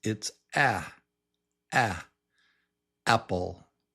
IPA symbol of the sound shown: æ